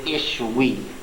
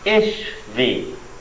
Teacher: the W's in Hebrew came to be pronounced as V's in the Middle Ages